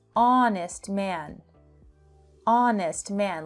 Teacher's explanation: it has a vowel sound. The H is silent.